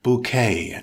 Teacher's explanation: it's a noun with two syllables stress the second syllable it's pronounced bouquet as in french with a silent t bouquet